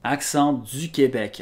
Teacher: I hear the vowel breaking in du. In France, we'd say du.